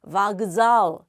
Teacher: 끄하고 즈가 결합이 되고 있는데 즈는 유성음, 앞에 있는 끄는 무성음이에요.